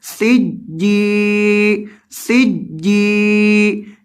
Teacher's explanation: جیم کو لمبا کریں گے کیونکہ اس کے بعد یا مدہ ہے